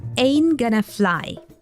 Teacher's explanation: Ain't is an informal contraction for am not, is not, and here it drops its T sound in the NT letters combination. We also hear gonna instead of going to.